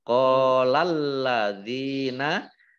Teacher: Kadzalika zal fathah berdiri mat tabi'i qala qaf fathah alif mat tabi'i masing-masing dibaca panjang 2 harokat. Lamnya dibaca double ada tasdidnya · zal kasroh ya sukun mat tabi'i panjang 2 harokat